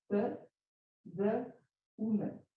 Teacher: l'image labiale des 2 lèvres qui se touchent pendant la production, un son bilabial